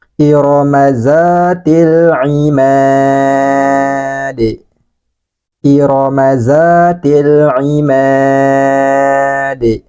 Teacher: lam ta'rif di hadapannya ada huruf qamariyah. Lamnya harus kita baca jelas dan dialirkan sebagian suaranya.